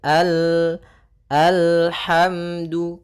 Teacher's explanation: Maka kita baca dengan al, kemudian al, hati-hati dalam lafal lam, sempurnakan makhraj daripada lam, ujung lidah naik melekat dengan langit-langit atas, ya, kena al, bukan al tapi al, alhamdu.